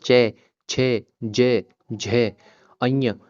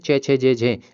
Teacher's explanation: जब उसको आप अपने मुंह से प्रोनाउन्सिएशन करेंगे उच्चारण करेंगे इसका तो आपकी जो जीभ होगी ना वो तालव्य पे टच होगी। आपके तालवे से टच होगी।